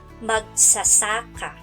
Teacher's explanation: Sa salitang magsasaka, ang nasa gitnang pantig ang binibigyan natin ng diin.